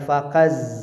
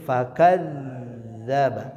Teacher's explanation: Az az hasil benturan ujung lidah dengan ujung gigi seri atas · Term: huruf zai